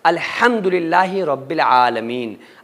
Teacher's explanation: سورہ فاتحہ پڑھنے میں لوگ مسٹیک کرتے ہیں، الحمدللہ رب العالمین، الحمدللہ میں جو ہا ہے نا، یہ جس کو بڑی ہا بولا جاتا ہے یہ وہ ہا ہے، یعنی کہ بیچ حلق سے نکلے گی۔ اگر کوئی بندہ الحم کو الحم پڑھ رہا ہے اور بڑی آسانی کے ساتھ نکال رہا ہے، الحم کہہ رہا ہے، شروع حلق سے ہا کو نکال رہا ہے، تو یہ لہنے جلی کی غلطی ہے، اور اس غلطی کا کرنا نماز میں قرآن میں حرام ہے۔